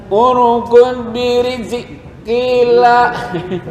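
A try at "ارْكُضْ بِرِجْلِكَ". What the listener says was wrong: Birijlika. Bukan kila. Lika.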